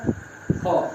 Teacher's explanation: जो उच्चारण हम करेंगे क और ख का, उसमें बिल्कुल कंपन नहीं होगा। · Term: अघोष